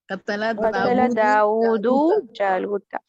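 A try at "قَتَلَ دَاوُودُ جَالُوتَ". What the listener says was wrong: قتل داؤد, اس کو تھوڑا کھینچ کے آپ پڑھیں گے, داؤد جالوتا.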